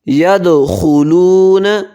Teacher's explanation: دال پہ قلقلہ ہوگا